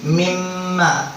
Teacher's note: Maka disebut dua bibir. Mim itu disebut huruf syafatun, huruf bibir, karena mim itu keluarnya dari dua huruf. Jadi kudu mingkem dulu. Dua bibir ini harus bersatu dulu. Mimma. Nggak ada orang yang bisa baca huruf mim tanpa menutup dua mulutnya.